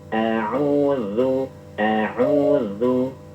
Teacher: Kita rasakan ada sifat yang lunak atau sifat rokhawah. Sifatnya itu lembut, bukan dihentakkan.